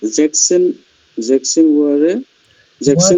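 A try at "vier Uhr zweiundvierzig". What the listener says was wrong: ওয়ারে না, ওয়ার। জেকসেন ওয়ার।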